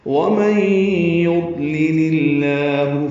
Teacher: وَمَن يُضْلِلْ میں نون ساکن کے بعد یا آنے کی وجہ سے ادغام ناقص غنہ کریں گے